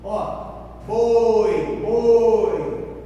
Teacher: Esse O aqui, ó, é forte e esse I é fraco. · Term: semivogal